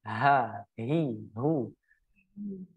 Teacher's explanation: itu kita keluarkan dari tenggorokan bagian bawah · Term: huruf H